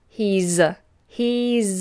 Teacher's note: Make sure that S is sounded like a Z.